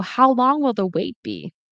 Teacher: So the stress is on long wait.